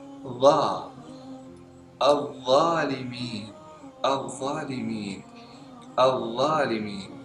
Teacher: Diucapkan saat dua gigi siri kita menyentuhkan ujung lidah. Dan harus ujung lidah keluar sedikit. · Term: huruf dha